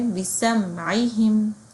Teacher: توسط ہے تو یہاں پہ آواز جاری رہتی ہے عین میں، جیسے ہم نے بِسَمْعِهِمْ جاری رہ رہی ہے.